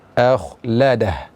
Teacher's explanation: a dibaca tipis, yaitu hamzah karena dia merupakan huruf istifal. Kemudian kha dibaca tebal. Dan berhati-hati jangan sampai kita terkecoh dengan membaca hamzah ini secara tebal karena terbawa suasana kha yang tebal.